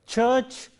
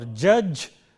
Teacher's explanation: Affricate sounds are ch and j. Ch is voiceless, j is voiced.